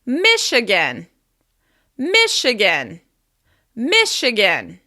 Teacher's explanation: As you can hear, we're stressing the first syllable